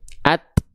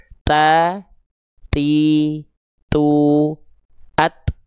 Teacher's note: Dia punya sifat namanya adalah hams. Hams itu artinya adalah percikan nafas untuk huruf ta. Atau terpercik nafas.